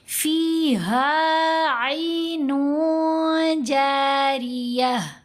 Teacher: کیونکہ آگے جیم ہے، جیم حروف احفا میں سے ہے، تنوین کے بعد آ رہا ہے، تو جو تنوین کی نون ہے اس کو ناک میں چھپائیں گے تو آواز بن جائے گی فیہا عین جاریہ.